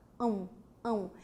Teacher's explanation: som nasal e o W porque o w é a representação fonética do som do U